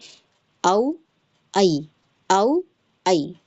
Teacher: اچھے سے جان لیجئے حرف لین کو کہ یہاں اس میں کھینچنا نہیں ہے، ٹھیک ہے، اور نرمی سے پڑھنا ہے